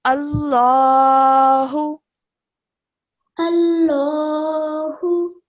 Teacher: So as you can see, the alif has a fatha. So when you say this word, you would say it with a thick and heavy sound. So you would say Allahu. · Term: majestic lam